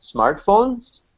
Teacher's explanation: my intonation does not start to go up until the very end the last word smartphones so it's that especially the last syllable of the last word · especially the last syllable of the last word I'm really bringing it up